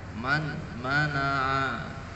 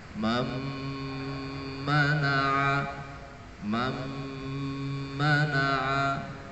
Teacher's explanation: Harus diidghamkan, nun mati dimasukkan ke dalam huruf mim atau mimnya ditasydid. Jadi seolah-olah nun matinya itu tidak ada.